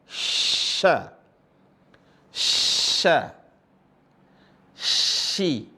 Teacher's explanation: Jadi tengah lisannya itu langsung nempel ke langit-langit. Kemudian didorong. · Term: huruf shin